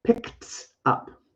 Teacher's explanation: I don't use my voice. I just use my tongue and my teeth just a little bit, and I push air out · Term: T sound